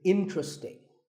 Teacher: This is mispronounced sometimes as interesting, but there are only 3 syllables, in-tra-sting, and the stress is on in, so the word is interesting.